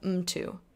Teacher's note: the M gets its own syllable